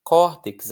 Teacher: Climax, a força não está no max, está no cli. Corttex, a força não está no tex, está no cor.